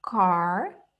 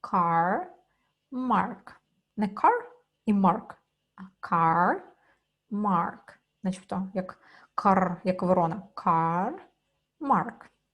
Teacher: Car така продовжена А